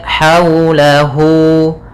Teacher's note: ada mad silah qasirah yaitu panjang madnya dibaca dengan 2 harakat